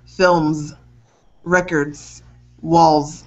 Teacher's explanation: It's a Z sound, so you should feel some vibration when you end those words.